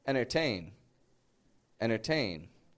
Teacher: we drop that T. We make the N short, and we pronounce the word very quickly.